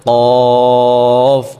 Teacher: যেমন ফা তারপর কফ কফ উচ্চারণের সময় আমরা কন্ঠ থেকে উচ্চারণটা করতে হবে কন্ঠনালী থেকে এবং মুখ থেকে না কফ বলা যাবে না বলতে হবে ক একটু কলকলা সিস্টেমে একটু আওয়াজ করে বলতে হবে